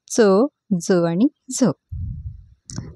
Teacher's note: दंत व तालू या दोन्ही स्थानापासून पासून उच्चार होणाऱ्या वर्णांना दंत तालव्य वर्ण म्हणतात आणि ते आहेत च ज आणि झ तर हे जे आहेत